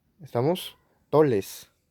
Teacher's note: los puertorriqueños o dominicanos, en algunos contextos, en vez de la R, la vibrante, usan la lateral